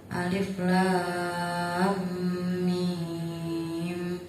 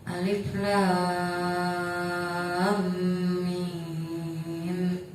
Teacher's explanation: Di situ ada mad bertemu dengan tasdid dalam satu huruf, maka cara bacanya panjang. Panjangnya 3 alif atau 6 harokat. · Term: mad lazim harfi mutsaqqal